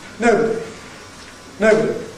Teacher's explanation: No prehead, no head, only one accent on the syllable no. So no is the nucleus.